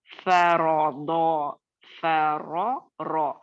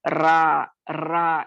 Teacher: ये जब जबर होगा रॉ पे तो इसको हम रा नहीं पढ़ेंगे बल्कि रॉ पढ़ेंगे। जैसे इंग्लिश जो लोग जानते हैं वो ये बात को अच्छे से समझेंगे कि इंग्लिश में जब हम लिखते हैं किसी कच्ची चीज को, RAW का रॉ कहा जाता है, रा रॉ कहेंगे।